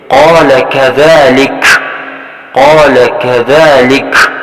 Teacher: آخری حرف کاف کی جو آواز آپ سن رہے ہیں یہی ہمس ہے